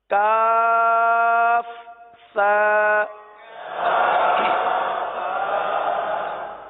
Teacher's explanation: زبان کا سرا اور اوپر کے دانتوں کے اندرونی کنارے، یہاں سے سا ادا ہوتا ہے